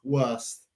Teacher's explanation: En inglés nativo es suave el T en el final.